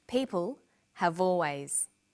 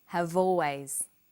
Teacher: Notice how in conversation we link the final consonant sound v with the initial vowel sound or.